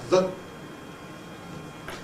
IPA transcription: ð